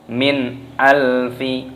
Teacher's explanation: Nun sukun bertemu dengan alif idhar halqi, dibaca jelas, jangan didengungkan. Min alfi, tidak boleh, harus jelas.